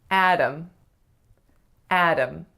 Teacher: The first syllable is the strongest and it makes the a sound. The second syllable is schwa m, or a syllabic m. And the real trick with this name is that it's not a D sound, so we don't say Adam or Adam.